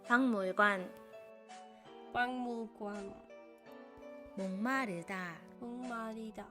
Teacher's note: Words where one syllable ends in g and the next syllable starts with m. In these words, g sound changes to ng sound.